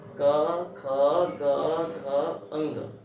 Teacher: हमारे जीवा का पश्च भाग हमारे कोमल तालु को छूकर बोला जाता हो तो उसे कहते हैं कंठे। बोल कर देखेंगे क ख ग घ अंग, क ख ग घ अंग, तो हमारे कहाँ से आई आवाज?